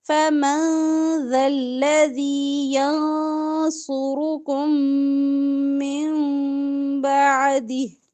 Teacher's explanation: کم میں میم ساکن کے بعد میم ادغام ہوگا غنے کے ساتھ